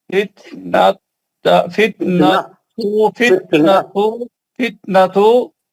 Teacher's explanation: فتنہ نہیں ہے تا مربوطہ ہے تو آپ کو ہا کی آواز نکالنی ہے